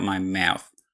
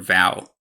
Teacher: this vowel is always raised and ends in a very open position so the final /w/ is more like a schwa or even [ɔ] for me